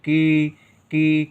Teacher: का के साथ ई का उच्चारण है और देर तक है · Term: बड़ी